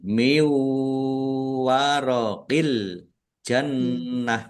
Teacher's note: Nun sukun bertemu dengan huruf wau. Idgham bighunah. Masuk dengan mendengung. Yaitu mendengung wau. · Al jannah alif lam komariah ditandai lamnya dibaca sukun. Nunnya nun tasdid dibaca gunnah. Ditahan biar tampak mendengung. Jannah tak marbutoh, ya, karena wakof dibaca hak sukun.